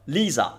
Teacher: I always forget sometimes you hear me say Lisa in Italian it's not right. It's Lisa in Italian between vowels vibrates into Z. So Lisa that's her name in Italian but Lisa in English.